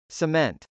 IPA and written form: səmˈɛnt (cement)